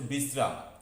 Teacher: শেষে ম কিন্তু পূর্ণ উচ্চারিত হচ্ছে না, যদি পূর্ণ উচ্চারিত হতো তাহলে সেটি হতো বিশ্রাম, কিন্তু এইভাবে উচ্চারণ এটা হয় না, তাই ম এখানে অর্ধ উচ্চারিত হচ্ছে এবং যার জন্য শব্দটির উচ্চারণ হচ্ছে বিশ্রাম।